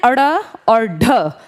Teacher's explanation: इन्हें कहते हैं अड़ और ढ। इनको बोलते टाइम ना जबान, जीभ थोड़ी सी ऊपर जाके अचानक से तेजी से गिरती है।